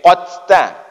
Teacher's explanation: hati-hati ketika baca huruf ta itu jangan berangin